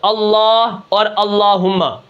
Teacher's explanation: اللہ اور اللہم کا جو لام ہے یہ موٹا ہوتا ہے